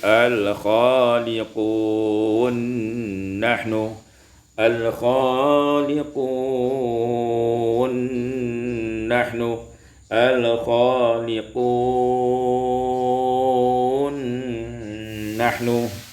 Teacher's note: idgham nun fin nun, diidghamkan nun pada nun